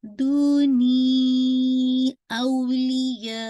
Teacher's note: मद्दुल जाइज मुनफसल, आप इसको 4 टू 5 count stretch करेंगे